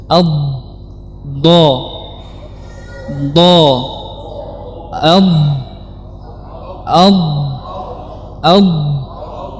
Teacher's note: Dan kita tekan. Huruf dha adalah huruf yang besar, huruf yang tebal, maka kita menekankan lidah kepada dinding gigi geraham ini. · Yang benar adalah dari sisi lidah bertemu dengan dinding geraham atas. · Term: huruf dad